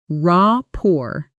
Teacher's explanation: Notice rapport is pronounced with a silent T.